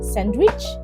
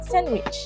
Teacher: So instead of sandwich it becomes sandwich with the d sound omitted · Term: elision